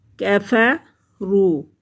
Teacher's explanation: کفروا، کاف کو باریک پڑھیں گے، کفروا۔ واو ساکن سے پہلے لفظ پر پیش ہے تو یہ واو مدہ ہے، اور واو مدہ کو بھی ایک حرکت کے برابر کھینچ کر پڑھتے ہیں